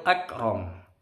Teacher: Kafnya sukun tidak mantul, cukup akram.